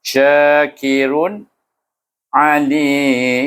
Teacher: sya tu panjang dan ra tu baris dua depan tapi dibaca dengan pendek, tak didengung. Syakirun alim, sebab tanwin bertemu dengan huruf halqum, huruf ain baca dengan izhar khalqi.